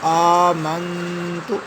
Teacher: نون کے اوپر غنہ کریں گے، تھوڑی دیر کے لیے آواز کو ناک میں روکیں گے